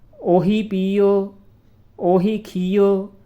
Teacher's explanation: ਇਹ ਜਿਹੜੀ ਆ ਦਰਮਿਆਨੀ ਆਵਾਜ਼ ਦੇਣੀ ਆ, ਨਾ ਪੂਰੇ ਹੋੜੇ ਦੀ ਆਵਾਜ਼ ਦੇਣੀ ਆ ਨਾ ਪੂਰੇ ਔਂਕੜ ਦੀ ਆਵਾਜ਼ ਦੇਣੀ ਆ, ਦਰਮਿਆਨੀ ਵਿਚਕਾਰਲੀ ਆਵਾਜ਼ ਦੇਣੀ ਆ